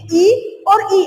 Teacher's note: आपकी जिह्वा आपके तालु के पास, उस तालु के आसपास के क्षेत्र को स्पर्श करते हुए निकल जाती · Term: तालव्य ध्वनि